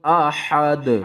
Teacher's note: وقف کی صورت میں دو پیش ختم ہو جائیں گی